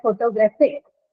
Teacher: The stress is on the vowel sound a.